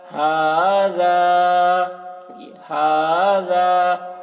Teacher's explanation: ہا کو بھی کھینچ رہے ہیں، ذال کو بھی، کیونکہ ہا میں کھڑا زبر ہے، ذال میں الف مدہ ہے